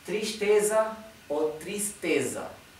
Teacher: la s anterior a la t se pronuncia sh como si fuera la sh del inglés